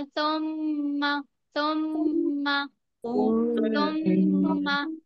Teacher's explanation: और मीम पर तशदीद है तो गुन्ना करेंगे · जुबान की नोक ऊपर की दो दांतों के किनारे से अदा होता है सा